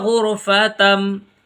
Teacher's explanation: تا میم دو زبر تم، تن نہیں پڑھیں گے، تم پڑھیں گے، یعنی دونوں ہونٹ چپک جائیں گے آپس میں